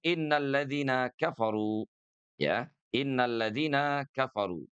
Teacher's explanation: Gunnah itu panjangnya cukup 2 harakat saja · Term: gunnah musyaddadah